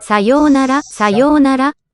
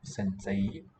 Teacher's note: What's written as a diphthong, two different vowels, fuses into a long single vowel in these cases.